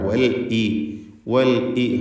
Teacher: ഹംസ ക്ലിയറാക്കി പറയണം, ഖത്താൻ്റെ ഹംസയാണ്.